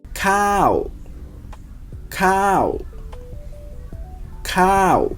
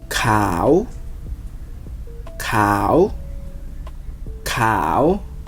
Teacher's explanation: a falling tone. It drops down